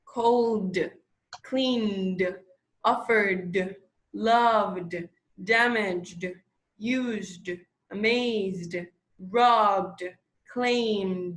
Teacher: the word ends with the voiced letter that you have vibrations in your throat